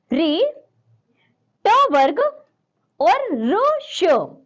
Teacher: इनका उच्चारण स्थान है मुर्धा इसे हम मुर्धन्य कहते हैं चौथा देखिए थ थो दो धो